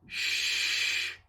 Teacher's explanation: to make the sound keep your fingers there and say Shh you can't feel anything that's because this is a breath sound